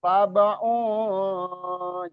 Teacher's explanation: Jadi unnya itu belum nyampe ke posisi lidah kita ancar-ancarnya masuk ke huruf sya. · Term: ikhfa